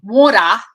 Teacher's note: australians flap their tees most of the time